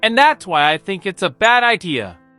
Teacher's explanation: The pitch of their voice drops at the end of the sentence. · Pitch goes down on idea. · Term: Falling intonation